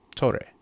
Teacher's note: The T is crisp. The O is slightly more open.